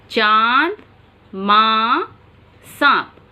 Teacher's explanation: अनुनासिक का चिन्ह होता है ये चांद और इस पर बिंदु, इसे चंद्र बिंदु भी कहा जाता है। जब अनुनासिक का उच्चारण किया जाता है तो इसके उच्चारण के समय नाक और मुंह दोनों से आवाज़ आती है।